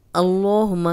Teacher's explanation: अल्लाहुम्मा का लाम और पीछे ज़बर, तो ये लाम मोटा पड़ा जाएगा और 2 हरकत लंबा भी करेंगे क्योंकि इस पे खड़ी ज़बर है।